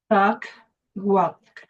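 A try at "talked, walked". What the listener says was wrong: Yeah, so try and do like a little exaggeration on the last, the T at the end. Walked, talked.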